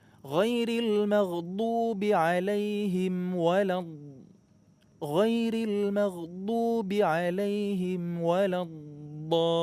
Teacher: ketika ngucapin alaihim sebelum waladdallin, bibirnya ditutup rapat dulu ya.